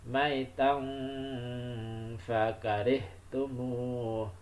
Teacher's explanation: Maitan itu dibaca mendengung ya, itu bacaan ihfa